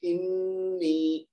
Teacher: مشدد ہے نا نون, تو ہم پڑھیں گے انی, انی نہیں کہیں گے, نون کو جلدی ادا نہیں کریں گے, اس کو دو حرکت تک کھینچیں گے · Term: نون مشدد